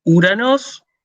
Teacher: Omicron, Ypsilon, no se pronuncia O. ¿Sí? Se pronuncia U.